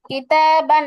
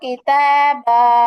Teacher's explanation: তো এরকম যদি থাকে, দুই জবরের তানবিনের পরে যদি খালি আলিফ আসে, তাহলে এখান থেকে একটা জবর বাদ দিব। একটা জবর এখান থেকে বাদ দিয়ে আর একটা জবর থাকবে, সেই জবরটাকে ধরে এক আলিফ টেনে পড়বো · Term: মাদ্দে ইওয়াজ